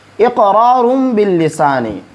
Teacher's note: اقرار باللسان، یہ ہم نے بیان کیا تھا کہ جب نون ساکن یا نون تنوین کے بعد با آ جائے تو وہاں ہم اقلاب کریں گے، یعنی اس نون ساکن یا اس تنوین کو میم کے ساتھ بدل دیں گے